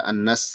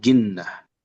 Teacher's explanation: Beliau menekankan gunnah pada nun bertasydid